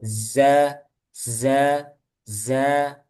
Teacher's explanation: Setiap mau melafadzkan huruf sin, zai, dan sod, biasanya didahului sofir ya, desisan.